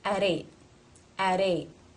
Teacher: comma there which means we're not going to connect it therefore it is a t at the ends of a word not part of a consonant cluster it's a stop